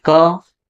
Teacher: जिसको बोलने में कम हवा निकले मुंह से है ना उसको बोलते हैं अल्पप्राण